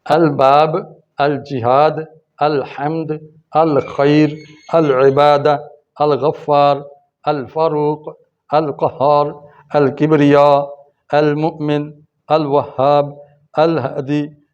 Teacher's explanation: ان سب میں دیکھیں لام پڑھی جا رہی ہے، لیکن ان کو پڑھتے ہوئے لام پر قلقلہ نہیں ہونا چاہیے۔ یوں نہیں کہنا چاہیے الباب یا الجہاد، الجہاد، الجہاد، زبان جڑی رہے گی اور اگلا حرف ادا ہو جائے گا۔